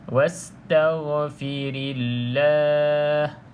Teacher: Jadi kalau kita sambung, jadi abaikan saja hamzah wasal ini daripada dilafazkan. Jadi terus kepada huruf sin yang sukun ataupun sin yang mati tersebut.